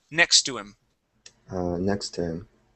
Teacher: So we're going to drop that H sound.